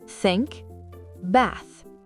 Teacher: Le TH sans voix. Glissez la langue entre les dents et soufflez.